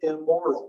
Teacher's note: it assimilates and it goes from the alveolar nasal to the bilabial nasal when it occurs in front of a bilabial sound